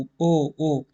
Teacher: आपके होट आगे को जाकर गोल हो रहे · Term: वृताकार, वृत्ताकार